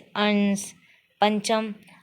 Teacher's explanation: अनुस्वार हवा केवल नाक से निकलती हो जैसे अंश, पंचम आदि अनुस्वार कहलाते हैं।